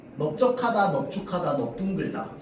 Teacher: 그런데 이 널이요, 적, 주, 둥을 만나면 어떻게 되는 거야? 넙으로 발음되는 겁니다.